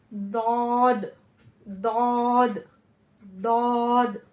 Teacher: अपने जुबान की करवट को पांच दाढ़ों से लगाना है और फिर मोटी आवाज में यानी जुबान की जड़ को तालू की तरफ बुलंद करते हुए मोटी आवाज में · आवाज जबान की करवट और ऊपर के दांतों के दरमियान से निकलती है